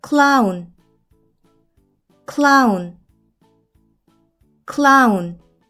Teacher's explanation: O와 W는 이중 모음으로 하나의 소리가 나서 아우 소리가 나요. 애는 어떤 소리가 날까요?